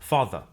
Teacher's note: that the final R sound is not pronounced in British English father ends in a simple schwa vowel · Father ends in a simple schwa vowel, like father.